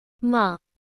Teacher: The tone quickly dips down, similar to saying the quickly. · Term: Fast fall down